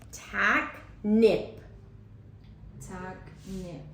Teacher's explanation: The first syllable is accented because my voice was louder and higher. I could also see or feel my jaw opening wider.